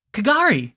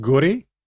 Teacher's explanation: The K isn't enunciated at all.